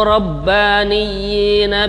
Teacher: Rabbaniyyi itu harokatnya berdiri ya, kasrahnya berdiri. Itu dua harokat.